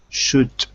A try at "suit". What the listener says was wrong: No. Suit. Nope. Suit. Nope. You gotta slow down. Slow down. Suit. You got to be careful because you want to say sh, but it's s on the second word.